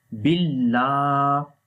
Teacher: like bil, and then lam has a standing fatha on it. So we long here 1 second